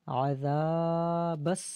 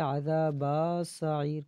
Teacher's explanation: ہے تو کچھ سمجھتے ہیں کہ با کو کھینچیں گے، نہیں، با کو سین کے ساتھ ڈائریکٹ ملا دیں گے